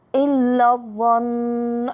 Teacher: النون المشددة أكمل ما تكون غنة